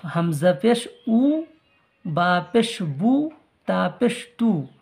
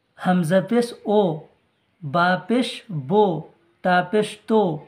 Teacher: বা পেশ বু মুখ গোল করে উচ্চারণটা করবেন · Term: মারুফ